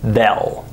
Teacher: Notice that there's no A sound. There's an E sound.